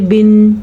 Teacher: इसको वैसे नून तनवीन भी कहते हैं क्योंकि इसकी अदायगी में नून की आवाज़ आती है